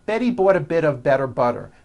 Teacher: notice that you do not hear any T sounds. T, t. They're only D's, d, d, which are voiced.